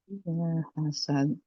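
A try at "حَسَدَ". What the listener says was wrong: Hasad. Hasad. Huruf dal mati. Bukan hasad. Kalau de berarti dia ada e-nya. E-nya itu nggak dibaca. Itu kan hamzah berarti ya, Bu. Hasad.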